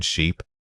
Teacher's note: For the long e, stretch the sound out slightly and keep those lips pulled back into a gentle smile.